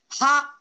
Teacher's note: Mahaprana means it needs great power, much more force and prana shakti to utter properly. Ha, we say, it must come out from our Napi Pradesha.